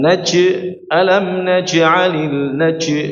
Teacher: coba huruf jim jangan sampai ada suara C-nya ya